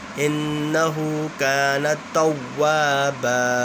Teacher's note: واؤ مشدد بھی ہے اور واؤ کے ساتھ الف ہے تو واؤ مشدد میں گنہ نہیں ہوتا، گنہ صرف نون مشدد اور نیم مشدد میں ہوتا ہے بس.